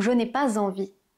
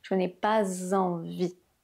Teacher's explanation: La seule chose que j'ai changé, c'est cette liaison entre le pas et le envie, ce s qui se transforme en zzz.